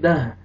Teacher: وقف کی صورت میں تا ہا میں چینج ہو جائے گا